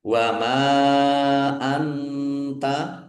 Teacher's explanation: Nun sukun bertemu dengan huruf ta. Bacaan ikhfa. Dibaca samar-samar.